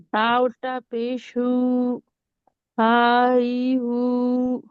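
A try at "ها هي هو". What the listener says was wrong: नहीं नहीं, खींचिए, हा ही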